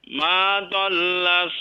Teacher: coba ditebalkan huruf dhad, huruf gha juga ghawa ditebalkan ya. Ma dhalla Bukan dol.